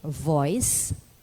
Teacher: The V is produced by placing the lower lip against the edge of the upper front teeth, as in F, but the breath expelled is voiced. So there should be vibration of the vocal cords. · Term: fricative V